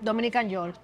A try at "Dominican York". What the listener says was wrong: Dominican, but you have to say it with the accent. No, the K no se pronuncia.